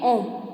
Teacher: प्लुता स्वरों को बोलने के लिए 3 मात्राओं से भी अधिक का समय उसमें लगता है